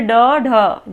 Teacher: जब आप उच्चारण कर रहे हैं तो आपकी जो जीभ है ये तालु से ऊपर लग रही है लेकिन तुरंत नीचे आ जा रही है झटके के साथ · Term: उच्छिप्त या द्विगुण व्यंजन